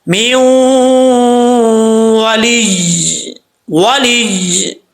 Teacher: پڑھ دیتے ہیں، ایسا نہیں کرنا، یا کے اوپر شد دے، تھوڑا سا یا کے اوپر زور دے کے پڑھیں گے